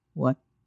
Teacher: Neutral tone short and light.